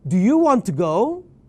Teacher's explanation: you got to speak the question in an up tone not a down tone a rising tone not a declining tone